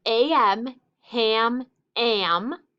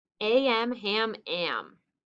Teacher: when a comes before m and n it changes the short a sound to a nasal sound the a is still considered short though but it sounds a